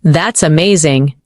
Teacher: When you say that's amazing, your tone rises with excitement.